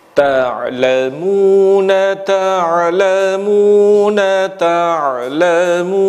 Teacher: nada nahawan ini terdiri dari 3 nada, terangkum dalam yang pertama naik, yang kedua datar, yang ketiga turun. Dan akhir dari nada yang pertama menjadi awal dari nada yang kedua, akhir dari nada yang kedua menjadi awal dari nada yang ketiga.